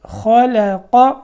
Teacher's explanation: خا موٹا لام باریک، قاف موٹا